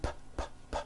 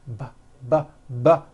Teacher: So we say the P sound and the B sound are paired consonants. They are produced exactly the same way here in your mouth, but the P sound has no voicing and the B sound, b, b, does have voicing.